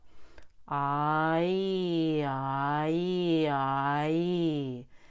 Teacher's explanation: it's just like the long i sound the ah and the e now that mainly your tongue is working to create the vowels